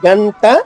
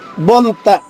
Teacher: గంట అంటే నాలిక పైన మడిచి టచ్ చేస్తున్నాం · నాలికి చివరి భాగం పళ్ళ పైన టచ్ అవుతది